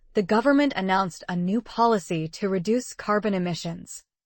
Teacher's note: The stressed words are government, announced, policy, reduce, carbon emissions.